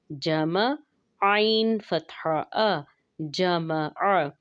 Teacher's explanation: जमा में आइन का ख़ास ख्याल रखेंगे कि ये हमज़ा महसूस ना हो। आइन का मखरज वस्त हलक से है, यानी कि हलक के दरमियानी हिस्सा से